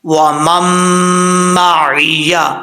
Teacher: پہلا میم جو ہے وہ دوسرے میم کے ساتھ کنیکٹ ہو رہا ہے، اور بیچ میں جو نون ساکن ہے اس کو ہم سکپ کر دیں گے، ٹھیک ہے۔ وَمَن مَّعِیَ، اور عین کو کلیئر کرنا، عین زیر عی، عی، اور یا زبر یا، وَمَن مَّعِیَ، ٹھیک ہے۔